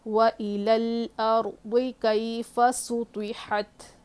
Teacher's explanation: سین باریک ہوگی، طا کو موٹا پڑھنا ہے، حا کی آواز حلق سے